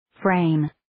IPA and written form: freɪm (Frame)